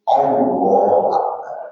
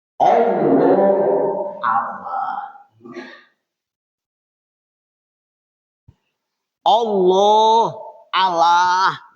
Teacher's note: Allah lamnya tetap tebal karena fathah di atas. Maka lam Allah itu tafkhim tebal